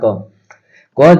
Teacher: पर हम बोल रहे हैं तो आपको अनुभव होगा ठीक कि आप अंत में जैसे क बोल रहे हैं ना तो इसके अंत में क्या जोड़ रहे हैं अ जोड़ रहे हैं